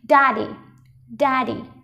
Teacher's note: trọng âm rơi vào âm đầu tiên cho nên chúng ta sẽ bật cao âm đầu tiên lên nào